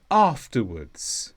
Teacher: This is an adverb and the stress is on af